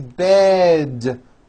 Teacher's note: Bed has a voiced D ending. It's not bet with an unvoiced T, it's bed with a voiced D.